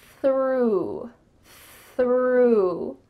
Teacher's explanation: have a th followed by an R let's practice it slowly your tongue is coming out between your teeth and there's some air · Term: th sound, TH sound